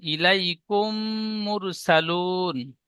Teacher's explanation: মিম সেকেন্ডের পরে মিম এসেছে, তাই মিমকে মিমের সাথে মিলিয়ে এক আলিফ পরিমাণ গুণনা করে পড়তে হয়। একে ঈদগামে স্বাভাবিক বলে।